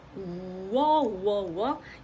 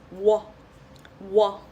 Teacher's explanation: a combination of oo, the booing sound oo, and then oh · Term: combined vowels